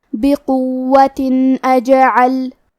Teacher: کلمت اجعل الف حروف الاظہار میں سے ہے اور اظہار کا معنی ہے ظاہر کرنا، اور کیونکہ تنوین کی اصلیت نون ساکن ہے تو ہم یہاں تنوین ظاہر کریں گے اور اسے نون ساکن پڑھیں گے اور بغیر غنہ سے یہ حکم کو ادا کریں گے